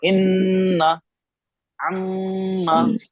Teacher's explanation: इसमें कुछ नहीं होता है, सिर्फ हम इसमें मीम, मीम और नून पे जो भी होता है ना, मीम और नून पे यहाँ गुन्ना करते हैं, यहाँ से, नाक से। बस काम ये है, आवाज को ना लंबा कर, इन्ना, अम्मा, बस आवाज को लंबा करते हैं, नून और मीम की।